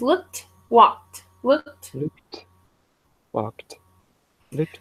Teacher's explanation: Now, it's the transition from the K to the T sound because when the word, how do I even do this? When the word ends with a K, the ED ending sounds like a T.